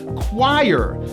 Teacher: Even though it's spelled like this, we pronounce this word as choir with a strong hidden W sound. Choir with a high I going to an R.